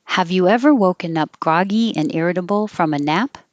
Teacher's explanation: a yes no question the answer should be yes or no so the whole direction will go up